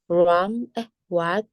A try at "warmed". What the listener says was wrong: Bacanya gini ya. Warmed. Ya ada D-nya. Warmed.